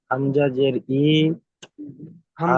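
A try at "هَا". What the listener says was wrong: হামজা জের আছে ওখানে? একটু দেখে পড়েন, তাড়াহুড়ো করবেন না, একটু দেখে পড়েন। হামজা নেই ওখানে।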